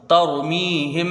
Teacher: آیا، تو یہاں پر میم ساکن کا قاعدہ آئے گا کہ میم ساکن کے بعد با آئے تو اخفاء شفوی، یعنی ایک الف کے برابر یہاں غنہ ہوگا